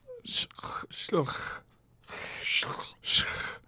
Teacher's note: the second part should be spelled s-j-o with an umlaut where sj is pronounced like shh s-c-h but in the back of your throat and with the tongue down